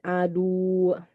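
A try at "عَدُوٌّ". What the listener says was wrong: Belum kurang tekan masih. Kenapa dia ditekan? Karena dia ini tasydid, maksudnya ada 2 waw.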